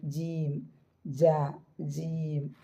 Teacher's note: ഗ്യാപ്പ് ഉണ്ടായി കഴിഞ്ഞാൽ correct ജീം വരില്ല മനസ്സിലായിട്ടുണ്ടാന്ന് വിചാരിക്കുക അതിന്റെ മുഹ്റജ് ആണിത് നാവിന്റെ മധ്യഭാഗം അതിന്റെ മുകളിലെ അണ്ണാക്കിന്റെ കനത്ത ഭാഗം എന്ന് പറഞ്ഞാൽ എല്ലുള്ള ഭാഗം